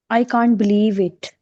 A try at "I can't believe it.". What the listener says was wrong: Make it little bit rising. Show your emotions. I can't believe it.